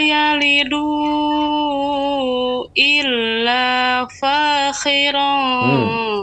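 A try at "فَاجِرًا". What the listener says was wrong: Perhatikan huruf apa? Fa, kha atau faji. Huruf jim. Ya, diulang kembali.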